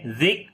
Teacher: ذک آواز کو بند کیا شدت کی وجہ سے اور سانس کو جاری کیا ہمس کی وجہ سے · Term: شدت اور ہمس